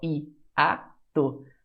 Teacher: Fora isso, hiato, duas vogais que separam. Até a própria palavra hiato tem hiato, né, pessoal? I-a-to. O I se separa do A.